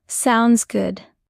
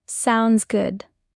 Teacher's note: Drop the D in sounds for natural speech. · Notice the D in sounds disappears.